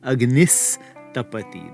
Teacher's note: The visarga turns into the dental sibilant s because of the dental tapati.